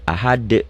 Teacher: Ini dalnya dalam ketentuan membaca Quran dihentikan jadi mati, jadi ahad. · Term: qalqalah